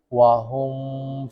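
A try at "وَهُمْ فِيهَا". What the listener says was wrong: terlalu lama. Nah, kayak gitu itu yang salah.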